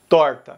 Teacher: E Goiás vai usar o R retroflexo